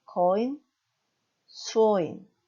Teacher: 단어 끝에 오면 니 발음이 아닌 인 발음이 됩니다